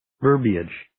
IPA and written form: 'vɜrbiɪdʒ (verbiage)